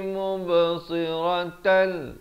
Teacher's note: Ayatan nahari mubsiratal, ada khokhalah, mubsiratal, idgham bila gunnah. Daripada mubsiratan jadi siratal, masuk tanpa dengung.